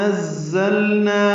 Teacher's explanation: نون کو معروف طریقے سے جلدی ادا کریں گے. نزلنا میں ذات صفیر کی آواز سے پڑھیں گے اور لام سے ملائیں گے. لام ساکن ہے.